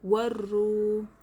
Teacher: वाव साकिन से पहले पेश वाव मद्दा होगा, इसलिए एक अलिफ के बराबर खींच कर पढ़ेंगे